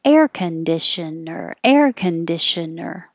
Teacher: it's starting high with air and coming down down down